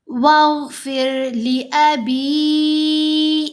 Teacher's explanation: واو پھر اب یہاں را کو کیوں باریک پڑھنا ہے؟ کیونکہ را ساکن سے پہلے زیر ہے، تو اب را ساکن کو ہم نے باریک پڑھنا ہے.